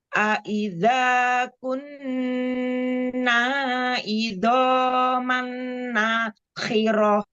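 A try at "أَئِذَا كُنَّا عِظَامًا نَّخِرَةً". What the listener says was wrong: Diulang. Nakhirah. Nah-nya jangan ada panjang ya. Nah yang ana maksud yang nakhirah.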